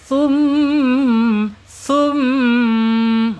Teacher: Ketika mim ini ber tasdid ya ee muncul sifat guna.